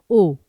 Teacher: अब ओ में मुंह काफी कम खुला है ओ, लेकिन बिल्कुल बंद से हल्का सा ज्यादा है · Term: अर्धसंवृत